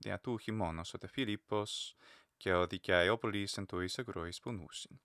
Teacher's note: Usually the final word has a noticeable lowering of the pitch, whereas there's a higher pitch in other places.